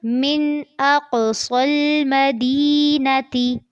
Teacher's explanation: من پہ غنہ نہیں کرنا، اق میں قاف کو پر بھی کرنا ہے اور قلقلہ بھی کرنا ہے. صاد کو پر کرتے ہوئے لام سے ملانا ہے لیکن لام کو باریک رکھنا ہے اور کوشش کرنی ہے کہ نرمی سے پڑھا جائے.